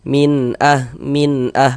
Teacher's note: Bunyi nun sukun atau bunyi tanwinnya itu dibaca jelas. Kemudian tidak didengungkan, tidak dighunahkan. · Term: izhar halqi